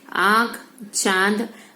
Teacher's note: चंद्र बिंदु वाले शब्दों का उच्चारण करते समय नाक और मुंह दोनों से हवा निकलती है। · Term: अनुनासिक